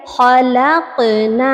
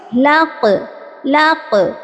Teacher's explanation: قاف کی مخرج سے ٹکرا کر آواز ہماری واپس آئی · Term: قلقلہ صغریٰ